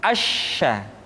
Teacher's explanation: Sya dikeluarkan dengan cara mengangkat tengah lidah kita ke langit-langit. Asya. Dan sifat yang dimiliki oleh huruf sya yang paling nampak adalah apa yang disebut dengan sifat at-tafashi, yaitu menyebarnya angin di dalam mulut kita.